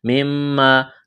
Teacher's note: جلدی پڑھیں گے. مما میم مشدد ہے آواز ناک میں چھپائیں گے غنہ کریں گے. الف مدہ ہے.